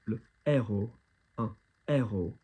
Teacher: There's not what we would consider aspiration in other languages. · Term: aspiré